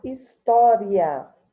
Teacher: como ele se separa na pronúncia, o tó aqui será uma sílaba tônica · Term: proparoxítona aparente